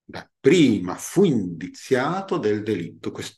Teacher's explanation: FUIN conta come sillaba unica. Abbiamo che LIT è l'ultima sillaba tonica · esiste infatti una fusione tra la U finale di FU e la I iniziale di INDIZIATO